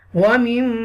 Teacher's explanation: What is gunna? To take sound into your nose and hold for a moment. It's called a nasalization.